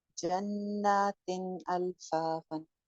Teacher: तो हमजा हरूफ हल्की में से है, हमजा हा आइन हा गैन फा, तो यहाँ पे हमने क्या किया, तनवीन को, तनवीन के अंदर जो नून एक हिडन नून है उसको हमने जाहिर करके पढ़ा